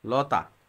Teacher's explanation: ত টা হচ্ছে অঘোষ অল্পপ্রাণ অঘোষ অল্পপ্রাণ